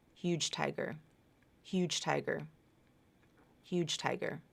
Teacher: the voicing has been reduced or dropped